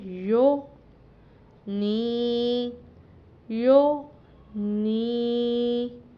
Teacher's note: تو یہاں پر ہمارے پاس جو حرف ہے وہ ہے غین۔ غین تھوڑا موٹا کر کے پڑھنا ہوتا ہے، پر کر کے، آواز کو بھاری کر کے، تو اس کو ہم نے قلقلہ ہونے سے بچانا ہے۔